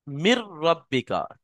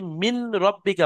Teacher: নুনটা সম্পূর্ণ র মধ্যে চলে আসবে। নুনের কোন উচ্চারণই বাকি থাকবে না। মির রাব্বিকা আর নুনটা এই র সাথে মিলে যাবে। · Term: ইদগামে তাম